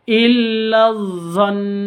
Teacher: Non tasydid artinya gunnah. Cara bacanya ditahan, ditekan dan ditahan 2 harokat.